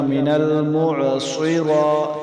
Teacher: را کو ہم نے لمبا کیوں کیا، اوپر کھڑی زبر ہے، کھڑی زبر کو ایک الف مقدار لمبا کریں گے